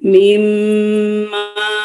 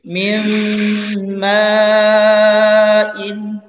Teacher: Ya, jadi nunnya ini yang sukun ini langsung kita leburkan. Jadi mim yang pertama ini langsung melebur ke mim yang selanjutnya.